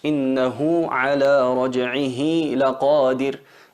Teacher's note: El ha es una letra suave, es una letra que sale con el flujo de aire y si no la hacemos notar ni siquiera se llega a percibir en el oído. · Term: as-sila as-sughra